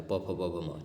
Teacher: प वर्ग का उच्चारण स्थान कहां पे है? तो ओष्ठ हो जाएगा।